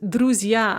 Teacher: which becomes druzy stressed in the nominative plural and note the mutation ge goes to z